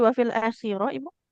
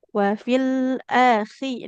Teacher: huruf khnya oh iya ditenggorokan paling atas